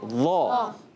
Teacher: ذا ہونٹ گول نہیں کریں گے